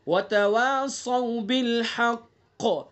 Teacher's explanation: قاف کے اندر قلقلہ بھی کریں گے اور پر بھی پڑھیں گے اس کو